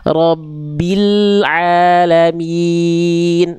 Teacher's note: Lam sukun yang robbil jangan memantul Bunda.